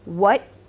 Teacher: I can say what and not actually release the T at the end, but you know that it was a T coming up because you could hear it at the end of the right?